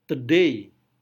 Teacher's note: day-nya lebih kuat daripada the